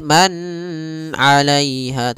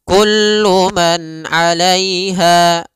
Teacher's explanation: Dan nunnya tidak boleh ditahan, tidak boleh man alaiha tapi kullu man alaiha langsung. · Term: izhar halqi